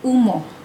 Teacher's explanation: Vokal belakang sempit ini diwakili dengan huruf U dan dibunyikan sebagai U. Contohnya yang hadir dalam perkataan umoh.